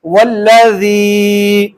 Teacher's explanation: یا ساکن ہے اور اس سے قبل زیر آ گئی ہے تو یا مدہ ہے، اس وجہ سے میں نے اس کو لمبا کیا ہے